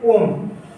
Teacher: इनमें हम सभी को इंक्लूड कर देते हैं जिनका उच्चारण क्या करा जाए, लंबा करा जाए। जैसे ओम, ओ की मात्रा को हम लंबा खींच रहे हैं